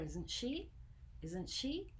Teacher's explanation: So intonation up means I really want to know. Intonation down means I just want confirmation.